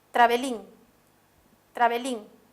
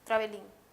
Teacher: esta es una palabra que tiene el acento en la última sílaba, travelín. Otra palabra sería novel. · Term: aguda